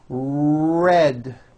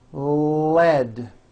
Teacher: when you produce an R sound your lips move forward but your tongue moves all the way back